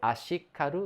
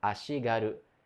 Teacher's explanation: o segundo elemento sonoriza, né? O som de ka vira ga